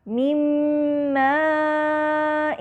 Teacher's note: من ماء، یہاں نون ساکنہ کا میم سے ادغام ہے